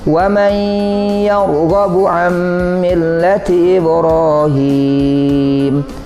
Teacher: huruf nun kepada hurufiah dan setelah itu kita dengungkan kita gunakan kita tahan bacanya dua ketukan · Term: Idgham Bighunnah